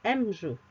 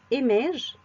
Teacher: on change le « e » final, muet, en un « e » fermé, en « et »